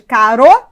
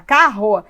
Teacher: o r no meio de duas vogais tem o som fraco